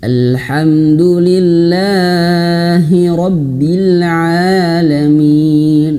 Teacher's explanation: kadang di kalimat lillah ini berlebihan panjang, dan a-nya pun berlebihan panjang karena membawa memaksakan irama seperti itu